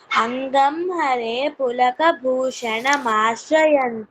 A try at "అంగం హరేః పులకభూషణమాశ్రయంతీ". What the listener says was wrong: హరే హే విసర్గం ఉంది అక్కడ.